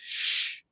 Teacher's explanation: because the s is next to an e it goes sh right that it becomes like a slender s